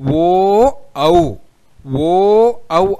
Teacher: ఓ ఔ అనే రెండు అక్షరాలు కూడా గొంతు దగ్గర నుంచి పుట్టి పెదవుల ద్వారా బయటికి శబ్దం అనేది వస్తుంది. కాబట్టి అటు గొంతు ఇటు పెదవులు రెండిటి యొక్క సపోర్ట్ని ఇక్కడ తీసుకుంటూ ఉన్నాయి. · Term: కంఠ్యోష్ఠ్యములు